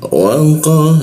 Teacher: huruf qa disikut tenggorokan ya, lidahnya kita naikkan, tidak ada hembusan udara ketika membaca qa.